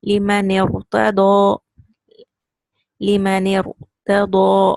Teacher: This noon kasra is joining to the ra. This hamzatul wasl will not be pronounced now.